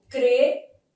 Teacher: a letra M tem som de I, sendo som semivocálico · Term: ditongo fonético